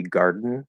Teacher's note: the more natural, faster, common way to say it would be garden, where it's like a syllabic N. But the clearly enunciated full pronunciation of the word is garden, garden.